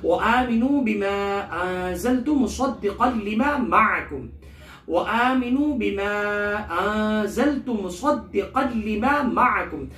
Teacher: وآمنوا میں نون کو کھینچ کے پڑھیں گے، وہ مد ہے، بما یہاں مد منفصل ہے، الف مدہ کے بعد حمزہ دوسرے کلمے میں ہے، لہٰذا یہاں مقدار 2 یا 4 الف کے بقدر ہے. انزلت میں نون ساکن کے بعد زا ہے جو کہ حروف اخفا میں سے ہے، لہٰذا یہاں اخفا کیا جائے گا. زا کو سختی سے پڑھیں گے، مصدقا لما کے صاد کو موٹا حروف مستعریہ میں سے، فیٹ لیٹرز میں سے، مصدقا لما.